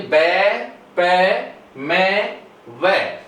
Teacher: bilabial consonant sound कहलाते हैं, क्योंकि इनका स्थान होता है वो होता है हमारे बोथ लिप्स होते हैं